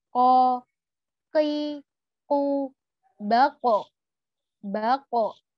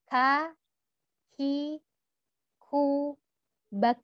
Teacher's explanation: Nah, yang huruf ko ini dia punya salah satu sifat yang tidak dimiliki huruf k, yaitu kolkolah. Jadi ketika kita membaca huruf ko, ada pantulannya kalau dia dibaca sukun atau dibaca wakof.